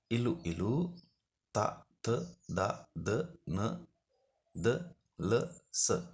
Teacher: දන්ත කිව්වේ දත් වලට. ඒ නිසා දත් ඇසුරින් උපදින අක්ෂර දන්තජ අක්ෂර